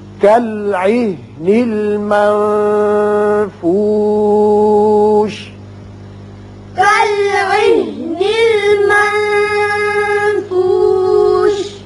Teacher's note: نون پر اخفا ہوگا، آگے فا حروف اخفا میں سے ہے.